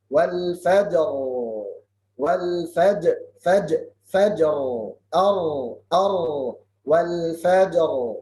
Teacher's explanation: Di waqaf juga baca ra. Tapi di waqaf ra wal fajr jadinya tebal, tafkhim.